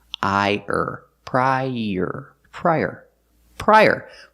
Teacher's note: i pry and er like Burger link The Sounds together prior use the Y sound like in yellow to link the two vowels